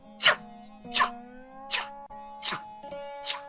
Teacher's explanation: Agora, o obstáculo é no palato, que produz a vogal I. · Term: consoante Tchá